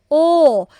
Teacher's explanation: pabilog naman po ang shape ng mouth natin, ng bibig.